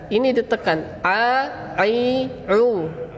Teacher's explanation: Huruf ain, cara menyebutkannya yaitu dengan menekan ketup epiglottis.